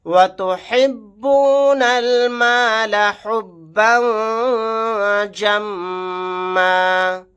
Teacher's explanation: نون کو ڈائریکٹ لام کے ساتھ ملا دیں گے، الف نہیں پڑھا جائے گا. با کے اوپر تنوین ہے، تنوین کے بعد جیم آ گیا، یہاں پر اخفا کا قاعدہ ہوگا.